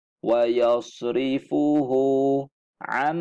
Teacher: Nun mati ni sudah tidak kedengaran bunyinya sebab dah masuk dalam mim. Am, dengung. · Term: idgham ma'al gunnah